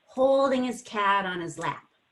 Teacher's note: you have to link the ng to the is · everything's in one breath of air so it sounds like one big long word